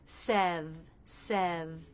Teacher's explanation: We begin with the S consonant sound and E vowel, just like second, so make sure you're dropping your jaw enough for that E vowel. Then we have the V, which looks just like all these Fs we've been talking about, only it's voiced.